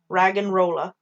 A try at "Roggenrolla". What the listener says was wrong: Why is it Rag'n'Rolla? There's no A.